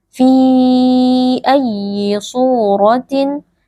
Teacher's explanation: Mad jaiz munfasil dibaca panjang 4 atau 5 harokat.